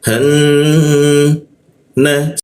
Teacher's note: nun bertasdid warna pink artinya apa? Kita tahan dua ketukan. Han na su giginya dirapatkan ya.